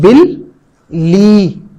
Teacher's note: बिल्ली के लफ्ज़ पे अगर आप गौर करें तो यहां पर लाम की आवाज 2 मरतबा आ रही है